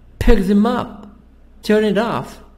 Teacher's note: will stress the verb pick turn and the preposition up and off